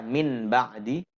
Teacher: dalam pengertian tajwid terbaliknya atau membaliknya suara Nun ke dalam suara mim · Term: iqlab